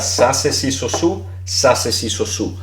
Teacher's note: ceseo lo que viene siendo es cuando pronunciamos todo como una S